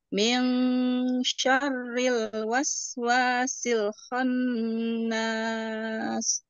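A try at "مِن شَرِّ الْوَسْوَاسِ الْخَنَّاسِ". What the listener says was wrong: Cuman sedikit tadi huruf lamnya jangan diputusin. Jangan wasil khon. Tidak. Tapi dia terus mengalir.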